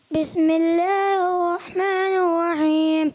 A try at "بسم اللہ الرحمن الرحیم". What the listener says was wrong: اچھا بسم اللہ الرحمن الرحیم. نور رحیم نہیں, نون کی پیش کی آواز محسوس ہو رہی ہے. بسم اللہ الرحمن الرحیم.